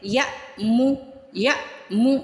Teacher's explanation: حمزہ پہ ساکن ہو تو جھٹکا لگائیں گے